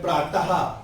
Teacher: आपका कंठ है। जब आप बोलते हैं प्रातः तो आवाज ऑटोमेटिकली आती है, क्या है? कंठ की आवाज आती है, गले से निकलती है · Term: विसर्ग